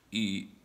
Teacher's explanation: you have to drop your voice until it starts to break like that's third tone · third tone is the frog voice